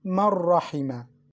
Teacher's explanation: We mixed Noon into Ra but without Ghunna.